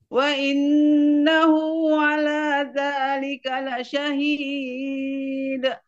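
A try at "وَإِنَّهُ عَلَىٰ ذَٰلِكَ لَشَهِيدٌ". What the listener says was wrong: ketinggian. Datar. Wa innahu ala dzalika la syahid. dulu sedikit didatarkan. Syahid. Jadi namanya gantung ya. Gantung.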